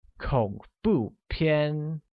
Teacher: Where horror movies translates to 恐怖片. 恐怖片 uses a falling rising tone on O, a falling tone on U, and a high level tone on A, making it 恐怖片.